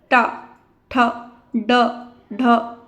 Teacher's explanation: हमारी जीभ अंदर की ओर हल्का सा बेंड करती है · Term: मूर्धन्य